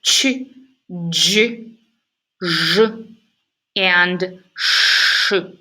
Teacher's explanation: They are made with a blade, the front of the tongue, and the rear of the alveolar ridge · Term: palato-alveolar